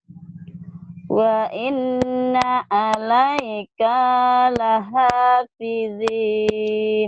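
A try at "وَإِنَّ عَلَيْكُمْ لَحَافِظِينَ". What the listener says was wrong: Pendek. Alaikum bukan alaika. Alaikum.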